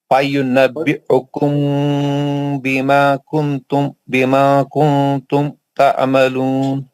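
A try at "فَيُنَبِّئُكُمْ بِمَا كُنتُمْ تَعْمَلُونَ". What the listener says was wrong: بما کنتم تعملون، اخفا کا غنہ تو صحیح کر لیجئے.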